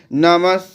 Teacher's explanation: বিসর্গটা দন্তস অর্ধেক দন্তস এর মতো শোনাবে